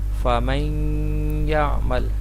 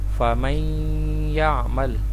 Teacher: جو نون ساکن کی آواز ہے وہ واضح نہیں ہوگی، وہ ضم ہو جائے گی یا کے اندر۔ فَمَن يَعْمَلْ، یہاں پہ غنہ ہوگا فَمَن يَعْمَلْ۔